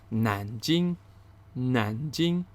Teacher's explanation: the second tone followed by the first tone